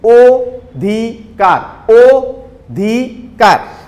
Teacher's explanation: এখন অ এর উচ্চারণ ও এর মতো করছি, আমরা খেয়াল করলে বুঝতে পারবা, অ এর উচ্চারণটা কিন্তু আমরা ও এর মতো করেছি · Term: সংবৃত উচ্চারণ